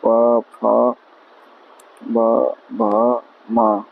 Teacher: जिन व्यंजनों के उच्चारण में दोनों ओष्ठों द्वारा स्वास का अवरोध होता है वे ओष्ठ व्यंजन कहलाते हैं।